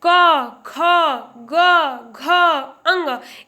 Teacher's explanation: क बोलने में सिर्फ कंठ का यूज हो रहा है